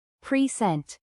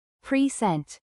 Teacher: As a noun, a present, the stress is on the first syllable, present. But as a verb, to present, the stress shifts to the second syllable, present.